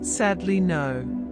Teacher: Then the word no receives stress again. The rhythm moves from strong to weak to strong.